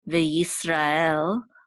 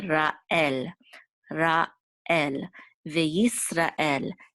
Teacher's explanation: we want to make sure to separate ra from el, so we don't want to say veyisrael.